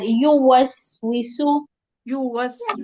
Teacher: يوسوس یو کو لمبا نہیں کرنا